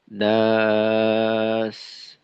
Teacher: শেষে সিনকে একটু সময় রাখা